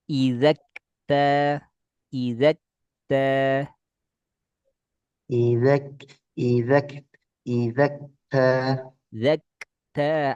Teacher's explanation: Percikan angin pada kaf.